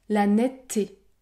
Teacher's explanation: le E disparaît les deux T sont côte à côte et je prononce un t long